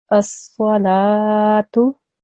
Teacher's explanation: I made my lam long as normal because it has a vertical fatha, and then I said my tamal buta as normal.